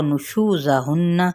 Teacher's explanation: شو پہ مد صریح بالواو اور نون پہ غنہ کریں گے